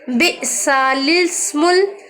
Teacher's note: اس کلمے میں لام سے پہلے اور لام کے بعد دونوں الف نہ پڑھیں بلکہ لام کو زیر دے کر پڑھیں